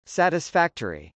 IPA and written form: sˌætəsfˈæktri (satisfactory)